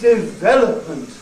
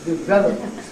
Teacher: No stress on the first syllable, but on the second.